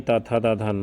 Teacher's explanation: त वर्ग में त, थ, द, ध, न आता है जो दंत से बोले जाते हैं।